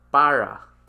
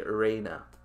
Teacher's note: but then if one feature of the kanye language is of the removing of the trill and then replacing it to more anglicized pronunciation of the r sound